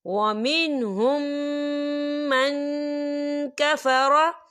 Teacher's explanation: नून साकिन की आवाज़ को नाक में छुपाएंगे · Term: इक्फा